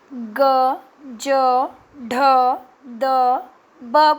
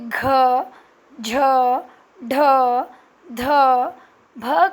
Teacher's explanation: दबाव भी पड़ रहा है और मुंह से हवा बाहर भी निकल रही है